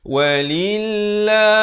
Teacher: Lafz jalalah ini dibaca nipis 2 harakat.